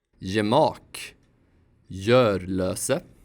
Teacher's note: This letter usually sounds like g, but like in English, it changes its sound before front vowels. In Swedish, it sounds like y.